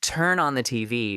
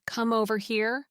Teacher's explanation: It becomes turn on the TV with smooth connections. The consonant at the end of one word flows directly into the vowel starting the next word. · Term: linking